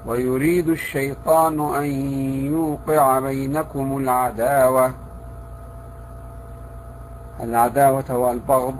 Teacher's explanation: كذلك إذا جاء بعد حرف الباء حرف مفخم أو حرف الألف، يجب على القارئ أن ينتبه من أن يقع في تفخيم حرف الباء. البعض يقع في ذلك، فمثلا في قوله تعالى: ويريد الشيطان أن يوقع بينكم العداوة والبغضاء.